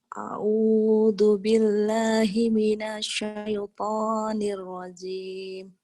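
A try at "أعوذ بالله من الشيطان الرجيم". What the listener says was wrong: Nirrojim. Jimnya keras Nirrojim. Jim keras. Nirrojim gitu.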